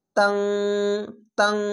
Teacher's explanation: তান নুনকে পড়ি না, অনাস্কার মতো পড়ছি